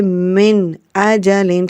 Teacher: So the sound of Hamza should be clear because this is the rule of izhar, which means to be clear.